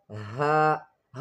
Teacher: Ha is pronounced from the lower part of the throat.